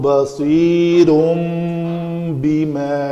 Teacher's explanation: یہاں پہ تنوین کے بعد با ہے تو اس تنوین کو میم سے بدل کر پڑھیں گے